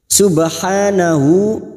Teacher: ba sukun yang mati asli di tengah kalimat qalqala sugro jangan lupa dipantulkan Subhanahu ha Alif kecil di atas atau fathah berdiri dua harakat